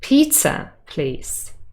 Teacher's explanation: pizza has contrastive stress we want to make sure the person understands